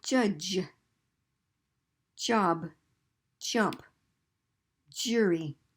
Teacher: And now we have the word job, and the sound of that is j. And j has a D kind of fancy Z combination. J. It's like 2 sounds blended very quickly.